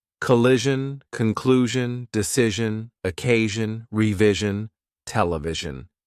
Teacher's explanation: this time the pronunciation is Jun not shun it's a heavier sound in fact Ash and z are paired consonants the only difference